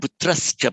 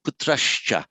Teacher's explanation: before a ch, the S wants to join, but it wants to come out at the same position as the ch. They're not putrascha, but putrashcha.